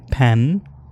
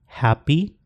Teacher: तो यहाँ पे extra puff of the air के साथ एस्पिरेट होके प्रोनाउंस हो रहा है प, और यहाँ पे अनएस्पिरेटेड है सिंपल प without any aspiration, puff of air के बगैर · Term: unaspirated per